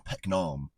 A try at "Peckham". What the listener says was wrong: Peckham. There's no N in it. Peckham.